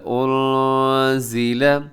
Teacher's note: نون ساکن ہے، نون ساکن کے بعد زا ہے۔ اب یہاں پر کیا کیجیے گا جی؟ اخفا کیجیے گا